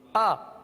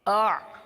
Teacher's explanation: حمزہ سخت ہے، حمزہ سختی کے ساتھ ادا ہوتا ہے، جیسے آ. حمزہ کے اندر سختی ہے آ، اور عین کے اندر نرمی ہے آ